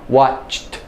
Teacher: watch is unvoiced so we get unvoiced T